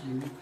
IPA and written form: juː (you)